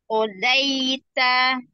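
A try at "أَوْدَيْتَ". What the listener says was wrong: Bukan dai, tapi boy. Odoita. Iya, do. Konsonannya do. O. Odoita.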